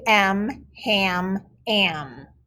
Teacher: when m follows that short a it makes the glued sound am